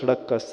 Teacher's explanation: यदि जीभ दांतों को टच करे तो सड़क का स निकलेगा